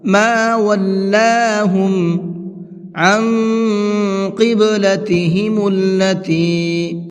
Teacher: عن کے نون کے اندر اخفا کریں گے۔ اخفا کہتے ہیں ناک میں آواز کو چھپا کر کے پڑھنا۔